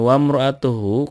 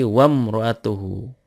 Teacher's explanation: karena di tengah-tengah maka hamzah wasolnya dilewat saja. Kalau kita pisah itu asalnya dari wa dan imro'atuhu asalnya.